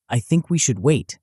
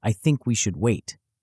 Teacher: I think we should wait sounds weak. A falling intonation sounds like a directive.